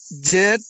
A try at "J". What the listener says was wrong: জেড না, জে। হ্যাঁ, জে